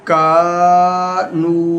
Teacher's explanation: ذالک، کاف الف زبر کا، نون واو پیش نو، کا نو، الف مدہ اور یہ واو مدہ، ان دونوں کو برابر کھینچیں گے